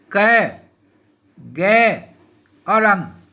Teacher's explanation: वे ध्वनियां जिनके उच्चारण में श्वास वायु का वेग कम या अल्प रहता है वे अल्प प्राण कहलाती है